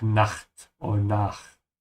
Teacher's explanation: Also pronounced like with a vibration because it comes after a